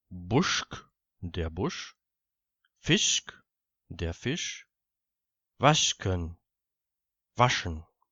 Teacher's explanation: Insbesondere auch vor einem K geht das S in Richtung sch.